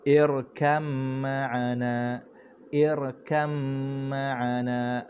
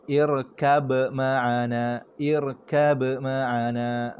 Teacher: masukkan terus huruf ba ke dalam huruf mim secara sempurna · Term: idgham